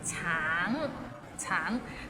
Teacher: 橙, it means orange, but some people might find it difficult because the end has a little ng, so it's a bit of nasal sound